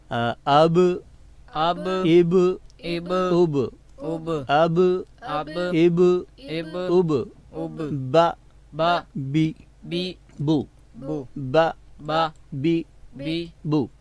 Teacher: اوپر والا جو ہونٹ ہے وہ نیچے والے ہونٹ کی اندرونی یعنی تری والی جگہ سے جب ملتا ہے تو حرف با ادا ہوتا ہے